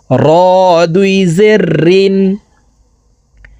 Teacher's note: জিহ্বার আগার পিঠ থেকে র হরফের উচ্চারণ করব